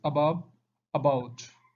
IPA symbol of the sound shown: ə